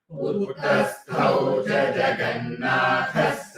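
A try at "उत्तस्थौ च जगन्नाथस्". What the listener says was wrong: Utta, not Uttasthau. First one is ta, but it is double ta.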